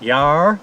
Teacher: we call it yaar with a rolling R